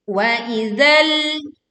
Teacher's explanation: ujung lidah menempel pada ujung gigi seri